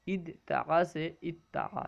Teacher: یہ دال اور تا دونوں ہم مخرج حروف ہیں، دونوں ایک ہی مخرج سے ادا ہوتے ہیں